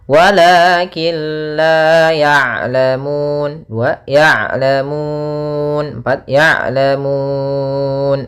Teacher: kita panjangkan sepanjang boleh 2 harokat, boleh 4 harokat, dan boleh pula 6 harokat. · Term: mad arid disukun